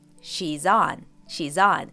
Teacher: the possessive s in she's links to on